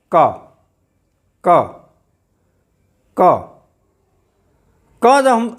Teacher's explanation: जब हम बोल रहे हैं तो ध्वनि हमारे कंठ से सीधे बाहर आ रही है, हमारी जिह्वा भी इधर उधर नहीं हिल डुल रही है, हमारे दांतों को भी टच नहीं कर रही है, तालू को भी टच नहीं कर रही है, हमारे होष्ठ भी आपस में स्पर्श नहीं कर रहे हैं, मतलब क बोलते समय हमारे कंठ से सीधे वायु बाहर आ रहा है।